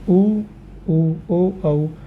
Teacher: उ उ ओ औ का उच्चारण करते समय हमारे होठ गोलाई लेते हैं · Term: वृत्ताकार